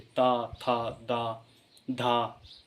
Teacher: दंत जो ध्वनियाँ होती हैं उनको बोलते समय आप देखेंगे कि आपकी जीभ दांतों को स्पर्श करती है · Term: दंत ध्वनि